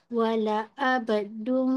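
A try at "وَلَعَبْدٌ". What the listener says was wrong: Jangan, jangan. Wala ab nanti dia jadi hamzah.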